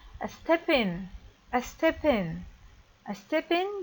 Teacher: the first word ends in p and the second word starts with a vowel i so i link the consonant with the vowel